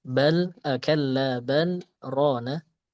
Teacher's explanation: Nah kita temukan saktah itu contohnya balla bal rona. Nah, ini kan bal lamnya kan ketemu ro setelahnya, tapi di sini tidak diidgamkan karena ada saktah.